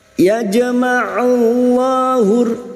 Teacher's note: lam jalalah yang didahului dumah kita baca tafkim atau tebal